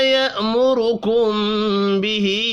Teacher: میم ساکن کے بعد با ہے، اخفاء شفی ہوگا